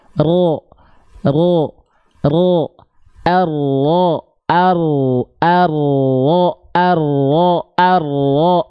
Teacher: Ujung lidahnya dia nggak betul-betul nempel. Bahkan dia nggak nempel. Dia hanya membuat celah kecil. Yang nempel tuh punggung lidahnya. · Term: huruf ro